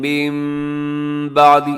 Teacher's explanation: من بعدی پہ اقلاب ہو رہا ہے غنّے کے ساتھ